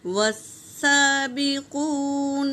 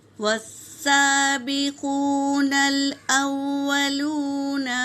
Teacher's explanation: والسابقون الأولون من المہاجرین، واو پہ حرکت ہے میری بہنوں اور سین پر تشدید ہے، تو یہ حرف شمسی ہے، اس لیے الف اور لام کو نہ پڑھے، اور سین پر کھڑا زبر ہے تو اسے ایک الف کے مقدار کھینچیں گے۔ واو ساکن سے پہلے پیش واو مدہ، اسے بھی ایک الف کے مقدار کھینچیں گے اور نون کو لام میں ملائیں گے۔